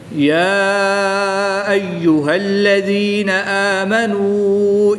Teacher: کھڑی زبر کے بعد حمزہ دوسرے کلمے میں ہے تو یہاں پر مد منفصل ہوگی، 2 سے 3 الف تک کھینچ کر پڑھیں گے۔ واو مدہ کے بعد حمزہ دوسرے کلمے میں ہے تو یہاں پر بھی مد منفصل ہوگی، یہاں پر بھی 2 سے 3 الف تک کھینچ کر پڑھیں گے۔